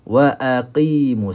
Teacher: Huruf qaf ni dia dekat dengan anak tekak.